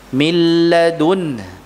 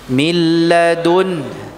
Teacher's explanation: Ya, nun sukun yang bertemu dengan lam terlebih dahulu. Tulisannya min ladunhu. Dibaca milladun. Ya, begini ya. Mana nunnya? Hilang. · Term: idgham bila ghunnah